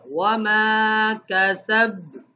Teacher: یہاں پہ کلکلہ ہوگا لیکن وہ تشدید والی سختی نہیں ہوگی